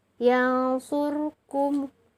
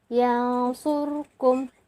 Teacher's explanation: Nah, di sini tanda dari ikhfanya adalah nun sukun bertemu dengan huruf shod. Jadi dibaca yang surkum, disamarkan dan didengungkan atau digunnahkan